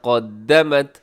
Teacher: قاف موٹا رکھیے گا، باقی سب باریک رکھیے